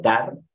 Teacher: yo digo dar así suelto la r está en coda cuando se encuentra una sílaba al lado que no tiene ataque